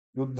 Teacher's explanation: नहीं है, तो युद्ध और फिर ध पूरा बोल दो युद्ध, और ध महाप्राण है तो बल दो , युद्ध ऐसा नहीं युद्ध, संस्कृत में थोड़ा सा बल दिया